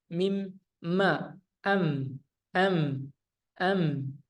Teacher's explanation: Terang di bibir dengan mulut tertutup. Artinya ketika kita mengucapkan huruf mim sukunnya harus benar-benar tertutup. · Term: izhar syafawi